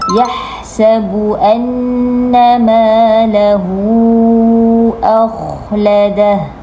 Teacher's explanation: Sepatutnya huruf kha perlu diangkat pangkal lidah dan keluarkan bunyi dari hujung kerongkong. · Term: huruf kha mati